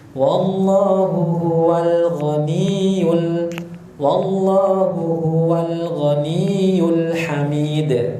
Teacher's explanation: Mengalirnya suara, mengalirnya sedikit suara. Ya, lam termasuk bersifat bainiyah atau tawassut. Jadi dialirkan sedikit.